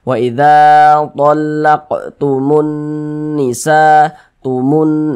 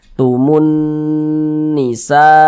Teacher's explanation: Karena dia gunnah musyaddadah, maka cara membacanya itu digunnahkan tuh ya didengungkan. Jadi suaranya itu kita tahan, kita panjangkan sejenak.